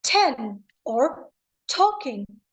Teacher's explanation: T is also a voiceless sound. It is uttered with a puff of air, just like 10 or talking.